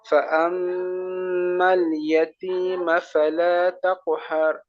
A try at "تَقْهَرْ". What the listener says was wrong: তাকু যেন হয়ে না যায়, তাকু এমনটা না, তাক, তাকহার, তাকহার।